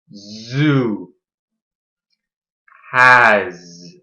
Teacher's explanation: Like the S sound, we put our tongue on the roof of our mouth behind our top teeth, the same place as T and D. Our tongue should be flat. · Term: Z sound